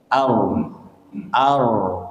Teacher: Bergetar satu kali getar. Ar. Jangan banyak banget getarannya. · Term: takrir